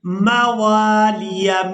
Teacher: واو کو الف مدہ کی وجہ سے کھینچ کر ادا کریں گے